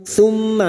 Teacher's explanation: mim yang bertasdid gunnah musyaddada, kita dengungkan selama 3 harokat